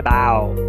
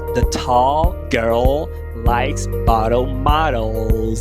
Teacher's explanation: Dificuldade que o brasileiro tem é trocar esse fonema, que é o dark l pelo U.